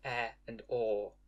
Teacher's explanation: Rather than /e/ and /o/, I have /ɛ/ and /ɔ/, which are pronounced more openly.